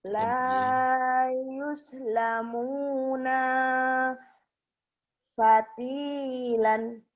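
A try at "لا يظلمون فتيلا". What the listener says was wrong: Panjang pendeknya aja yang salah.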